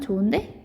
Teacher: 좋은데라기보다는 좋은데 이렇게 히읗 탈락되죠